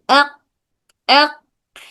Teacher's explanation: तो जब अक बोल रहे हैं, आपकी जबान छोटी जबान अक बोलते वक्त में जो छोटी जबान है, छोटी जबान ऊपर तालु को जाके चिपक रही